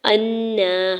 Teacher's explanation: حمزہ کے زبر کو نون مشدد کے ساتھ ملاتے ہوئے غنہ کرنا ہے، اوپر کھڑی زبر ہے، دو حرکت کھینچ کے ادا کریں گے۔